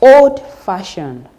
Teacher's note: The stress is on fa in that particular word, in that particular adjective.